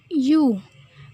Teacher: Apabila bibir membulat, maka akan terjadilah vokal U.